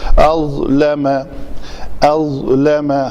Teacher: حمزہ پتلا اور ضا موٹا